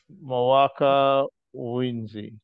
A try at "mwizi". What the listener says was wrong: No, just say mwizi. Mwizi, not N. Mwizi. Zi. Mwizi.